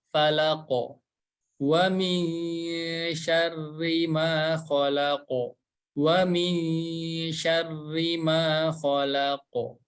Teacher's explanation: Dan waqaf atau berhenti, maka huruf qaf ini dipantulkan. Dikarenakan huruf qaf ini huruf tebal, maka pantulan suaranya lebih ke fathah.